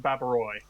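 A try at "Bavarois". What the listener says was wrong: Isn't OIS pronounced Wa?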